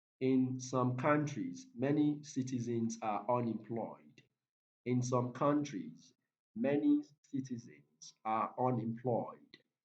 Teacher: so the stressed word here is countries